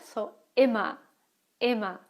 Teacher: the ER at the end of the word. It sounds more like an A than an actual R, yeah? So, immer, immer.